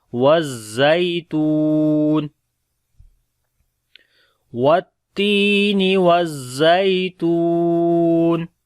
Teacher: تا کو لمبا کریں گے، واو مدہ ہے